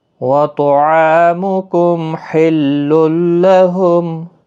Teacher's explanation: میم ساکن کے بعد ہا آیا ہے، اظہار شفوی ہوگا۔ تنوین کے بعد یرملون کا لام ہے، ادغام گنہ نہیں ہوگا، ادغام ہوگا۔